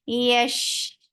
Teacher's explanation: Give rakhawa on sheen, tafashi on sheen. Yesh that is short.